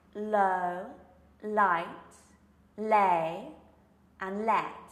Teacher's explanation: the tip of my tongue goes up to my tooth ridge, which is that little tiny bar just before the front teeth, and then it comes down. So it goes up in preparation before I begin to speak, and then down. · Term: L sounds